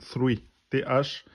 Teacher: c'est le son la langue entre les dents